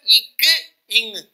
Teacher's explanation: நாவின் முதற்பகுதி அன்னத்தின் அடிப்பகுதியை பொருந்துவதால் பிறக்கும் எழுத்துக்கள்